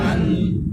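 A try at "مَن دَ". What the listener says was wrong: দা। তাহলে নুন আলাদাভাবে উচ্চারণ হইলো, ডাল আলাদাভাবে উচ্চারণ হইলো, লুকাইলো না কিন্তু। এখন কি করতে হবে? লুকাইতে হবে। এই লুকানোর কাজটা কিভাবে করা হয়? করা হয় কি, মান, জিব্বাটা উপরে তালুর সাথে লেগে গেছিল, এটা লাগবে না, একটু ফাঁকা থাকবে। আর যে জায়গা থেকে দাল উচ্চারণ হয়, জিব্বাকে ওই জায়গায় নিয়ে যেতে হবে।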